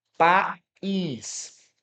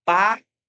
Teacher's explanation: esse I tem um som independente, tem um som forte. Inclusive, é um som mais forte do que o A.